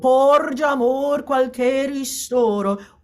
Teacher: All of the stress is at storo.